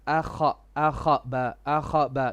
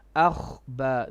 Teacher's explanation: No, akhba. There is no qalqala on kha.